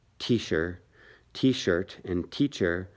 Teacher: the CH and the SH sound the same right so the word t-shirt t-shirt and teacher sound the same